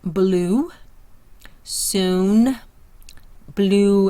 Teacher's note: Tongue is high back, the mouth is tense, lips opened in circle. So when you hear oo, think of blue. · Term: long oo sound